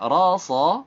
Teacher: sa-nya tidak boleh membulatkan bibir